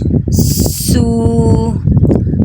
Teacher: سین سختی کے ساتھ پڑھنا ہے، سین سیٹی کی آواز آنی چاہیے